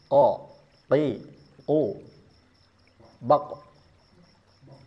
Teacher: Pangkal lidahnya diangkat. Mau fathah ataupun mau kasrah tetap pangkal lidahnya harus dinaikkan karena memang makhrajnya di situ. · Bukan akar lidahnya, tapi pangkal lidahnya dinaikkan bertemu dengan langit-langit mulut. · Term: huruf qof